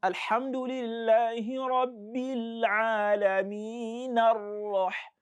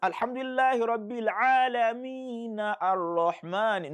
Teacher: once you pronounce that Fatha on the noon, then you go straight to the Ra of Ar-Rahman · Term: pronounce the Fatha